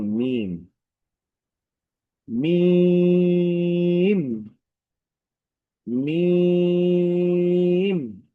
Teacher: যদি এই এই এই হরফের উচ্চারণ যদি আমরা একটু খেয়াল করি, তাহলে দেখব যে দুই ঠোঁটের শুকনা জায়গা থেকে উচ্চারিত হয়।